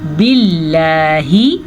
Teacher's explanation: اللہ کے نام کو باریک پڑھنا ہے، کیونکہ لفظ اللہ سے پیچھے والے حرف کے نیچے زیر ہے۔ اگر لفظ اللہ سے پیچھے والے حرف کے اوپر زبر ہو یا پیش ہو تو لفظ اللہ کو پر پڑھتے ہیں، لیکن اگر زیر ہو تو لفظ اللہ کو باریک پڑھتے ہیں۔